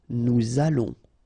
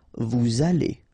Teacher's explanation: make this little link between the two, what we call the liaison